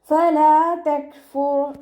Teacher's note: നമ്മുടെ നാവ് മുകളിൽ തട്ടാത്ത രൂപത്തിൽ വെച്ചിട്ട് ഉച്ചരിക്കുക കേട്ടോ. ഫ ലൈറ്റ് ആക്കിയിട്ട് ഉച്ചരിക്കേണ്ട അക്ഷരങ്ങൾപ്പെട്ടതാണ്. മഖ്റജ് വരുന്നത് നമ്മുടെ മേലെ മുൻപല്ലിൻ്റെ അറ്റവും താഴെ ചുണ്ടിൻ്റെ ഉൾവശത്തെ നനഞ്ഞ ഭാഗവും ചേർന്നിട്ടാണ്. ലൈറ്റാക്കി കൊടുക്കാൻ ശ്രദ്ധിക്കുക കേട്ടോ.